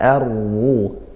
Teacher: ra-nya juga dibaca tafkhim karena dia dhammah harakatnya, maka kita baca tebal, pangkal lidah naikkan ar-ru seperti itu.